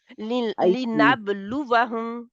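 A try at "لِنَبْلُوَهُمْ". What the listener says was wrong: واؤ کو چھوٹا رکھنا ہے. لنبلوہم.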